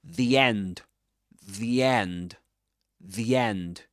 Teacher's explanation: Look at how he says the end, the end, the end. He connects both words. The end of one word to the beginning of the next one.